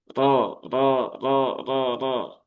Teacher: Jadi bukan ro ya, tapi ro. Tidak perlu monyong ya, tidak perlu manyun karena huruf ro-nya berharokat fathah. Tapi juga jangan kemudian menjadi ro, iya, ro, ro, ro. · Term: tafkhim